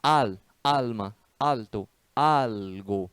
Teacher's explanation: a pronúncia do L, no meio de palavras, no final ou antes de consoante, como é o caso aí, não tem som de U